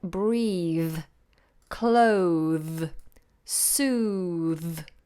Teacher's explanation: it's a voiced th if the th comes at the end of verbs like breathe clothe soothe